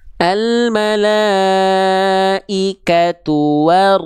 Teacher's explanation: jangan lupa tebalkan tekan rnya monyongkan domah ya